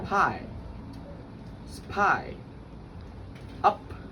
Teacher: These sounds are made by completely blocking the airflow and then releasing it. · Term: plosives or stops